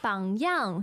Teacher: bangyang third and fourth tone